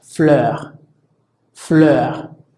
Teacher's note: se pronuncia similar al de la letra E, como un poquito más alargado o más prolongado, como por ejemplo en la palabra fleur, fleur, que significa flor.